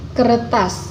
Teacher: penarikan ujung lidah kebelakang pada artikulasi primer sehingga terdengar er pada bunyi utamanya kecuali bunyi apikal bunyi lain dapat disertai retrofleksi misalnya bunyi K